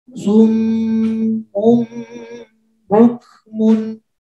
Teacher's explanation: Ini mim bertemu dengan ba. Kemudian jadi cara membacanya dengan berdengung.